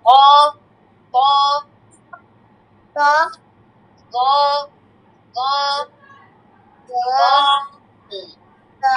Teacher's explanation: ক মোটা করে ক একটা মোটা শব্দ বের করবে